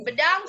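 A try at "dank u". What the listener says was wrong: Apa? Dangku bukan bedangku. Bedangku itu bedakan.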